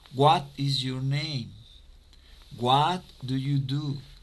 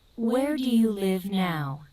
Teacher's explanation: Y vamos bajando el tono en la pregunta.